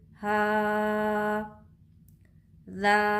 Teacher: हा, हा के ऊपर खड़ा ज़बर है, खड़ा ज़बर बराबर होता है अलिफ मद्दा के। खड़ा ज़बर को एक अलिफ के बराबर खींचकर पढ़ेंगे